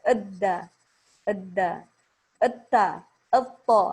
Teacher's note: Dalnya makhorijul hurufnya yaitu dari ujung lidah. Ujung lidah menyentuh gusi gigi seri atas